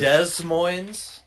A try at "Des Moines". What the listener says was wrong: That's just Des Moines. No S's.